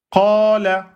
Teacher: On voit que le alif prolonge la fatha. Et donc, c'est un med au tabi'i, donc 2 temps. Qala. Ça prolonge de 2 temps. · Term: voyelles longues